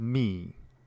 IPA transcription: mi